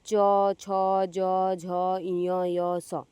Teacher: आप बिना तालु के प्रयोग के बिना आप ये वर्ण उच्चारित नहीं कर सकते हैं। इसीलिए ये तालव्य व्यंजन कहलाएं।